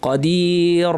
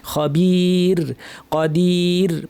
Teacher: শাইইন কাদির, এই কাদির শব্দে থামার কারণে আমাদের রটা কিন্তু পাতলা করতে হবে, কারণ থামলাম যখন সুকুন দিয়ে থামলাম, র সাকিন পূর্বে ইয়া সাকিন আছে, আর র সাকিন পূর্বে ইয়া সাকিন থাকলে র সাকিন সবসময় পাতলা, এটা অনেক এক্সপার্টরাও ভুল করেন, কাদির বলে ভারী করে ফেলেন, এটা কিন্তু ভুল।